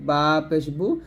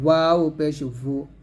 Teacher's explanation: একটা হচ্ছে দুই ঠোঁট মিলাবেন, বা পেশ বু, আর দুই ঠোঁট গোল করবেন, ওয়াও পেশ ভু। ইয়া পেশ ইউ, দাল পেশ দু, দদ পেশ দু, কফ পেশ কু, কাফ পেশ কু।